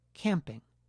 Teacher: because it’s a stop that is homorganic with the preceding nasal, the oral articulator doesn’t have to make a separate gesture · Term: stop consonant